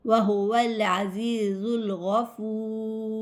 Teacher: یہاں پر جب بھی وقف کریں گے تو مد عارض لگے گی. مد عارض کو 4 حرکات کے برابر کھینچ کے پڑھتے ہیں